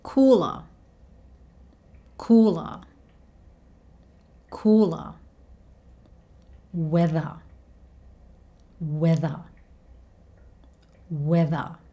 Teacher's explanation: He replaces the R sound with the schwa sound, and usually the schwa sound is very quiet. You don't even really hear it.